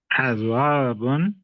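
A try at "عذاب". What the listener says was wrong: होठों को गोल ना करे, अज़ाबुन। अज़ाबुन, ज़ा ज़ा, ज़ा नहीं, अज़ा, होठों को खोल के रखे, अज़ाबुन, अज़ीम में पढ़ेंगे होंठों को गोल करके, अज़ाब उनमें पढ़ेंगे सीधा, हमारे पास दाल है।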